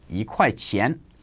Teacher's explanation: second tone if it is followed by a fourth tone word